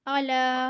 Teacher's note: जी, आइन जबर आ, लाम खड़ा जबर ला, आला, लाम खड़ा जबर ला, इसको भी एक अलिफ की मकदार में खींच कर पढ़ेंगे।